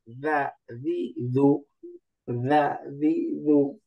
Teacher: জিব্বার আগা, উপরের দাঁতের আগা